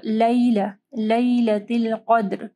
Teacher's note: قاف کو ہیوی پڑھنا ہے، دال کے اوپر کلکلہ کرنا ہے